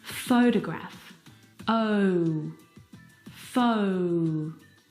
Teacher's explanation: The second syllable is unstressed, and it is reduced down to the schwa sound.